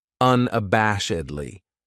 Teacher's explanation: This adverb has 5 syllables, and the stress is on that third syllable, that bash, unabashedly.